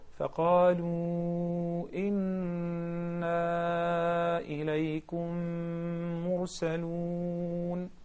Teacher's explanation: We agreed that we're going to prolong المد المنفصل to four counts.